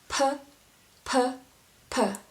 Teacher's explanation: you use a bit more of air and actually blow it out a bit. P, p, p, like P sound in English.